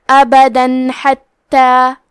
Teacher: کلمت حتی یہاں حکم ہے اظہار تو ہم تنوین کو ظاہر کریں گے اور اسے نون ساکن پڑھیں گے اور بغیر غنہ سے یہ حکم کو ادا کریں گے